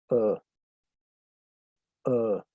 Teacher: Es un sonido muy neutro. Eh, no corresponde a la A, ni a la E, ni a la I, ni a la O, ni a la U. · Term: schwa